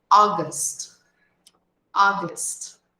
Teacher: Observa que nós escrevemos esse mês com a letra A, mas nós pronunciamos o início dessa palavra com o som de O, porque é a junção da letra A com a letra U.